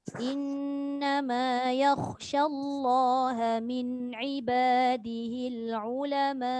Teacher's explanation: Dan bila dia sambung huruf hamzah tu dibaca pendek. Bila dia berhenti hamzah tu dimatikan sahaja tapi mesti panjang sebelum hamzah sebab ada tanda panjang.